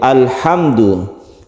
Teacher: ini kita sebut dengan izhar syafawi syafawi artinya bibir maksudnya adalah mim itu makhrojnya di bibir sehingga kita harus mingkem · mim itu makhrajnya di bibir, sehingga kita harus mingkem ya. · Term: idhar syafawi